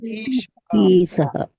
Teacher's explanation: ఈ ప్లస్ ఈ కలిపితే దీర్ఘ ఇకారం అయింది